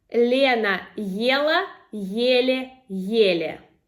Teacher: the first tongue twister for A1 level is to practice the difference between L and L. So the hard L and soft L.